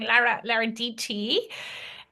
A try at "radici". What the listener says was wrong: you gotta roll your radici. It's Radici. Radici.